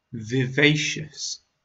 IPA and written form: vɪˈveɪ.ʃəs (Vivacious)